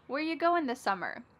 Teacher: Where ya, which is you, goin', dropping the G